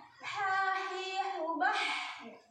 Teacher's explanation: Kalau ha tuh bersih tanpa ngorok ya, nggak ada ngoroknya.